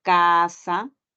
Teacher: La letra C, que es aquella que a veces utilizamos para referirnos al fonema oclusivo, velar